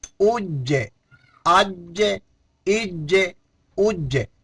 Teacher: جیم میں بھی قلقلہ ہوتا ہے اور حروف قلقلہ ہیں، اس کی آواز دوبارہ لوٹ کر آئے گی